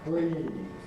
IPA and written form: briːð (breathe)